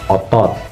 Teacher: posisi lidah menengah ke bawah dan ditarik ke belakang. Dan untuk posisi bibir sedikit dibulatkan